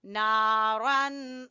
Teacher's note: زبر ہے، سیسلا نارن، نارن، نون کے ساتھ الف ہے، نارن، را کو پر پڑھیں گے اور یہاں پر اخفا کریں گے ، کیونکہ تنوین کے بعد ذال حروف اخفا میں سے ہے۔